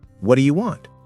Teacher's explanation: The words connect. The do you becomes ju.